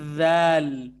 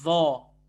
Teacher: ذال اور ذا تو آپ کو پتا ہے میکینزم ایک ہی ہے, صرف موٹے اور پتلے کا فرق ہے